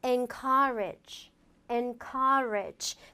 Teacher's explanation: n은 좀 내려주시고 courage는 좀 올리면서 길게 발음을 해주라라는 포인트 잊지 마세요.